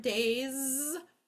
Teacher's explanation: sometimes when we add the letter s um like in the word days it does vibrate it makes that z sound